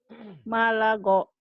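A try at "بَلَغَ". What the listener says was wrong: Bukan ma itu Bu.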